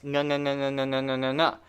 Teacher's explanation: When you say ing, the ing sound here, the back of your tongue, way back there, comes up and touches the back of your mouth, the beginning of your throat.